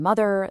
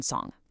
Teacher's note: Think of the M in mother, the N in run, or that ing sound in song. The air channels straight through the nose.